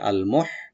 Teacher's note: মোহ হাটাকে একটু আমরা হামস করব গলার মাঝখান থেকে, আল মোহ, সোয়াটাকে ওপেন করে পড়বো একটু, সিন যেন না হয়।